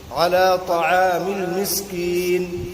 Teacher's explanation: سین کے اندر قلقلے والی صفت پیدا نہیں ہونی چاہیے